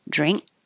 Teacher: you don't hear any of these um stop consonants